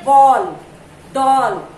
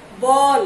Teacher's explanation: ये आगत स्वर है। इनका उच्चारण आ और ओ के बीच ध्वनि के रूप में होता है। मतलब जब हम बोलते हैं तो हमें आ और ओ के बीच की ध्वनि जो है हमें सुनाई देती है।